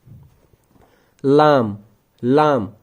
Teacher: लाम का मखारिज है जुबान का तरफ लिसान जब ऊपरी दांतों के जड़ों के साथ लग जाता है लाम अदा हो जाता है। जुबान का जो ये वाला पार्ट होता है इसे तरफ लिसान कहते हैं।